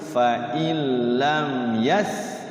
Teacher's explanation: Berarti huruf ya itu selain mim dan ba berarti izhar syafawi tidak boleh dibaca dengung atau dibaca guna. Jadi harus izhar jelas.